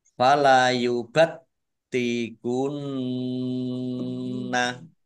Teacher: taknya dibaca double, ada tasdidnya. Nun tasdid dibaca gunnah atau mendengung, ditahan 2 harokat.